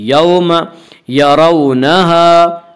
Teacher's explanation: रा को पुर पढ़ेंगे, रा के ऊपर ज़बर है। यरौनहा, वावलीन, वावलीन वो वाव जो साकिन उससे पहले ज़बर हो, वावलीन को नरम आवाज़ के साथ पढ़ेंगे।